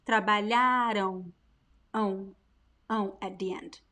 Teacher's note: There is no M sound. No, no, no, no. Don't close your lips when you pronounce this word. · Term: ão sound